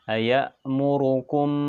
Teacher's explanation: apabila mim sukun bertemu dengan huruf ba maka dibaca samar di bibir dan mendengung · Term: Ikhfa Syafawi